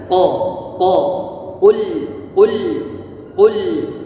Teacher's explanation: seharusnya kita memakai huruf qaf dengan mengeluarkan huruf qaf pada pangkal lidah.